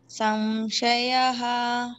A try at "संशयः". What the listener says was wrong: అనకూడదు. షా ముందర వచ్చిన అనుస్వారం కాబట్టి సం అనాలి. పళ్ళు మధ్యలో పెట్టేసేయండి.